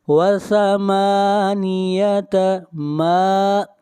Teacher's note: میم کے اوپر کھڑی زبر ہے، میم کو کھینچ کر پڑھیں گے ایک الف کے برابر